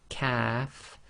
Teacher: The calf calf is again touching the soft pallet but it's slightly more forward than the cough and it's just said normally quite softly as calf calf group five is operating where the tongue is touching the hard pallet almost in the middle of the mouth.